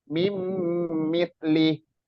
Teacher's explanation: nun sukun bertemu mim mim nunnya dimasukkan ke mim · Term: Idam bunah